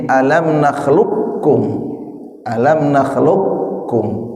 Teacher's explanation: Qof dan kaf qo terus ini ka kalau dibaca fathah dua-duanya ini berdekatan tidak satu makhruj tapi berdekatan sehingga nanti kalau ada lafaz qof mati ketemu kaf misalnya alam nakhluq kum nakhluqkum itu qof-nya tidak dipantulkan karena diidghamkan ke kaf ya. Jadi menjadi alam naklukkum.